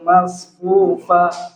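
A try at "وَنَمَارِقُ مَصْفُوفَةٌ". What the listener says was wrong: Masih ada kekeliruan. Kalau tidak ada kaidah mat, jangan dipanjangkan ya. U-nya nggak boleh panjangkan. Wa namariqu masfufa.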